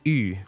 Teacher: It's called the closed front rounded vowel and it's pronounced like the letter u with umlout in German or the letter u in French or as in the word u in Chinese or a lot of languages use this sound.